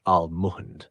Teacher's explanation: The word almond is pronounced like this, almond. The emphasis is on the first syllable, ahl. The mund part is more relaxed. So it should sound smooth and not too stressed on the second part.